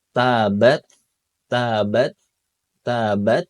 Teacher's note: kalau dia sukun baru terasa hamsnya dan juga sedikit terdengar